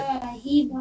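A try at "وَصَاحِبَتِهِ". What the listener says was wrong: वसा, वसाहिबा नहीं, वसाहिबती। ही खींचिए, हा खड़ी जेर ही। हम्म, वसाहिबतिही, वसाहिबतिही। फिर पढ़िए, वसाहिबतिही।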